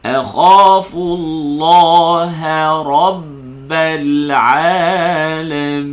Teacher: Rabbal ha tu nipis. Ra tu tebal balik. Ra ni tebal.